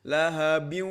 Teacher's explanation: harus mengikuti tempat keluarnya yaitu al khayshum, ke hidung